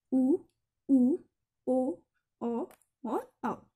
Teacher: व्रतमुखी मतलब जिनमें हमारे ओठ व्रत की भांति आकार ले लेते हैं, उन्हें कहते हैं व्रतमुखी स्वर।